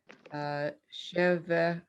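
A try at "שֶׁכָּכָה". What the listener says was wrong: That's a ka. Sheka.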